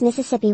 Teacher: I usually pronounce Mississippi with a voiceless vowel in the second syllable